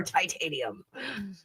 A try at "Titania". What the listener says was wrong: Because you put the emphasis on the tit. That's why.